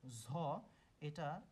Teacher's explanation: ঝ হচ্ছে মহাপ্রাণ ঘোষ মহাপ্রাণ হিসেবে ব্যবহৃত হয় এবং এর স্থান উচ্চারণ স্থানটা হচ্ছে তালুব্য